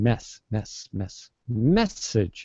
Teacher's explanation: I'm going to stress that first syllable